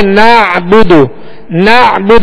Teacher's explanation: آگے نعبد، نعبد عین کو وسط حلق سے ادا کریں گے. نعبد با پر پیش دال پر پیش دونوں کو بغیر کھینچے بغیر جھٹکا دیے معروف پڑھیں گے.